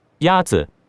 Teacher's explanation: The first tone is a high, level tone.